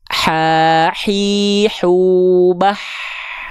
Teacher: Jadi karakter hak kecil itu dia bersih berbisik.